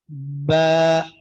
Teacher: जब तरी वाले हिस्से आपस में मिल जाए दोनों होंठों के तो बा अदा होगा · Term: बहरी